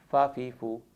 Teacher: فا کا مخرج ہے اوپر کے دانت جب نیچے کے ہونٹ کی گیلی جگہ پہ لگیں اندر والے حصے میں فا ادا ہوتا ہے۔ مخرج کے اعتبار سے اسے شفویہ کہتے ہیں، جیسے فا زبر فا، فا زیر فی، فا پیش فو، فا فی فو۔